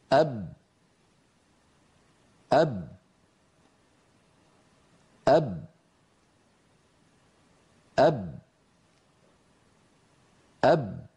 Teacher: باء بعدها، تخرج بتصادم الشفتين